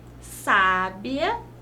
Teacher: nós sabemos que o verbo saber sabia tem mais tonicidade no bi mesmo não havendo acento